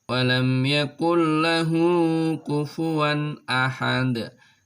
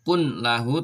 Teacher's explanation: sukun ketika ada tanwin bertemu dengan salah satu dua huruf ini maka nun sukun nya atau tanwinnya dibaca lebur tetapi tidak disertai mendengung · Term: idgham bilagunnah